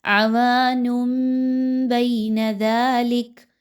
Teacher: آپ نے یہاں پر نون کی آواز کو میم کی آواز میں بدل دینا ہے. یاد رکھیے نون کی آواز بالکل بھی نہیں آنی چاہیے. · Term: اقلاب